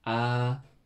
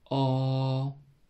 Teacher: 왼쪽에 점을 찍으면 어라고 발음합니다. 입을 크게 벌리고, 아. 입을 조금 작게 벌리고, 어.